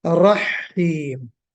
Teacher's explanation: तो हा पे थोड़ा सा शद्दा महसूस हुआ, उसको बहरहाल आपको दुरुस्त करना है, शद्दा नहीं होना चाहिए।